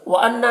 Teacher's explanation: یہاں پر نون مشدد غنہ کے ساتھ پڑھیں گے